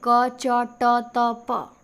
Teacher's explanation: पहले तो क वर्ग आएगा, आपको पता है। क वर्ग आएगा कंठ में, च वर्ग आएगा तालु में, ट वर्ग आएगा मूर्धन्य में, त वर्ग आएगा दंत में, प वर्ग ओष्ठ में। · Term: उच्चारण स्थान